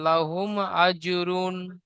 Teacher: জিমের উপরে সাকিন আছে, জিম হুরুফে কলকলা, তাই জিমকে কলকলা করে ডান দিকের অক্ষরের সাথে মিলিয়ে পড়তে হবে। রয়ের উপরে দুপেশ তানবিন আছে, তানবিন নুন সাকিনের আওয়াজ একই রকম, যেমন লাহুম আজরুন।